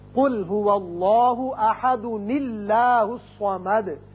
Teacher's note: ایک چھوٹا نون پیدا ہوگا زیر کے ساتھ